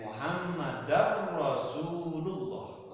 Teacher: Tanwin menghadapi roh, tidak boleh dibacanya dengung. Muhammadar pendek, Muhammadar Rasulullah. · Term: tanpa dengung